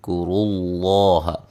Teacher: ادا کریں گے، کرو اللہ را کو موٹا ادا کریں گے، لفظ اللہ کو موٹا ادا کریں گے، اس سے پہلے حرف پر پیش ہے